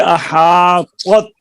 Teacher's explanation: ایک تو یہ احاطت زبر تا یہ مشکل ہے ذرا, کیونکہ دونوں حرف ایک جیسی آواز کے ہیں. فرق کیا ہے, طا موٹا ہوگا, تا باریک ہوگا